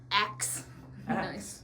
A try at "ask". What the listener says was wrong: No, you're saying acts.